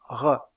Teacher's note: dans le cas de cette constrictive il y a un resserrement du passage de l'air au niveau du voile du palais